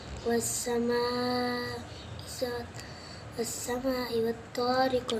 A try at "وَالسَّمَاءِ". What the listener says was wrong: والسماء सीन को लंबा माँ को लंबा करो ना.